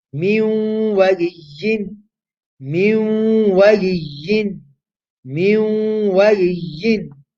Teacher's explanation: Waw is part of yanmu. We merge the noon into the waw alongside doing gunna.